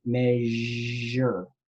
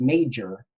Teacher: That is an affricate, major. It's not measure.